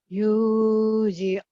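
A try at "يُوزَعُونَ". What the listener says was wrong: Bukan yuzi tapi yuza. Yuzauna.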